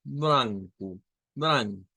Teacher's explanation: con una a media nasalizada